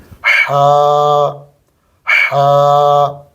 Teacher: गले को थोड़ा सा दबाकर अंदर से हवा का प्रेशर बनाकर गले पर जब डालेंगे तो हा निकलेगी